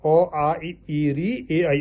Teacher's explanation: यह होठ जो है गोल नहीं हो रहे हैं